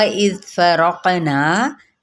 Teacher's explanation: यहाँ पे रॉ को पुर करते हुए कौफ पे कलकला करेंगे